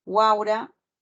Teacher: la vocal abierta a está en el medio de ese triptongo